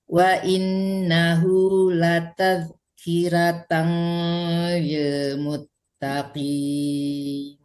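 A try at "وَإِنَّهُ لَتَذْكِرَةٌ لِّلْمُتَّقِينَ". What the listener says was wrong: Kiratul ya, jangan kiratan, tapi kiratul.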